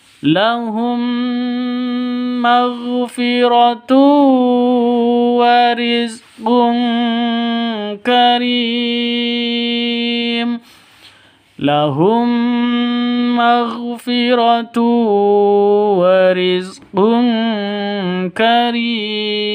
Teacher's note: mim mati bertemu dengan mim. Bacaan cara bacanya masuk ke mim yang kedua, dengung 2 ketukan karena idgham mimi atau idgham mislain.